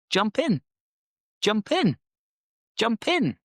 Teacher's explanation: So what we actually do is we link them together and it becomes jump in. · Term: catenation